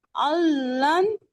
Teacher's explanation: नून साकिन के बाद लाम आ गया, अब क्या होगा, इदगाम कामिल होगा और बगैर गुन्ने के होगा